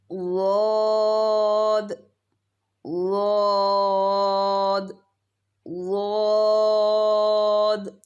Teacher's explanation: حافۃ اللسان یعنی زبان کی کروٹ اور اضراس علیا یعنی اوپر کی داڑوں سے کیا نکلتا ہے؟ ضاد۔ دونوں سائڈز یا ایک سائڈ بھی استعمال کی جا سکتی ہیں، آپ کو بتایا گیا، مگر بائیں طرف سے نکالنا آسان ہے۔